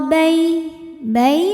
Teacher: Faf ruq wa bain bai ada harfu lin atau huruf lin karena ada ya sukun yang sebelumnya berharakat fathah maka dibacanya cukup kita lembutkan atau kita lunakkan